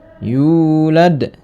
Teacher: Yu dibaca Mad thii hukum bacaan Mad thii panjangnya dua harakat atau satu Alif